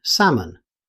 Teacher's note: Although it's spelled with an L, you'll never hear it. Native speakers simply say salmon. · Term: silent L